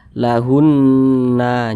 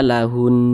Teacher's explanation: kalau kita berwakaf di huruf nun, maka huruf nun kita sukunkan. Jangan dibaca lahunna, jangan, tapi dibaca lahun.